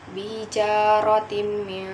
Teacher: idgham bi ghunna karena tanwin bertemu dengan mim, dibaca masuk dan dengung sepanjang 3 harokat